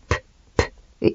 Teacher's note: P est faible parce qu'on utilise, il y a l'air qui sort, mais on n'utilise pas les cordes vocales en fait. P, P.